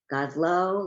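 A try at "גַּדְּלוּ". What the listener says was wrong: Godlu, not Godlo. You see where the dot is? The dot is in the middle. You see Godlo.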